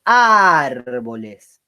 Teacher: la sílaba tónica es la A, porque yo digo árboles. Entonces, si voy de atrás para adelante, digo la última sería aguda, la penúltima grave, pero la fuerza cae en la antepenúltima.